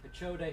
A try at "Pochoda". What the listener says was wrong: No. It's my fault entirely. It's Pochoda. The H is silent. Literally, someone emailed me from Poland the other day with the same last name and pronounces it like you did, so.